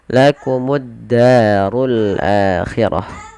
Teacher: fathah bertemu dengan alif, 2 harakat panjang lafal da. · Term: mad tabi'i